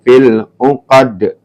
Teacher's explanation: Ini dibaca qalqalah ya mantul, pendek ya.